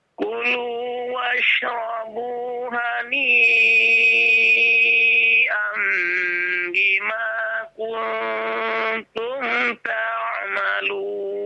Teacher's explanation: hani itu dibaca panjang 4 atau 5 harokat